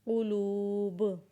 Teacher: बा के ऊपर क़लक़ला करेंगे।